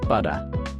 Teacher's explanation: sound is made by the tongue quickly tapping behind the front teeth · Instead of pronouncing a hard T, Australian English uses a softer sound similar to D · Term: tap T